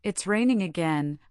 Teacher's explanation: with a bright rising tone, I sound excited or happy